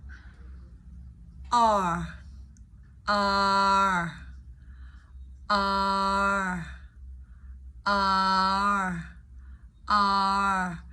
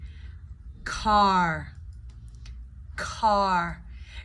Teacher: You're basically blending the two sounds together, the ah and the R. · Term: R vowel sound